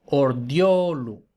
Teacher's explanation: Eso, como también he dicho, también ocurre cuando la vocal es una E, no solo pasa con la I, entonces la E también se transforma en yod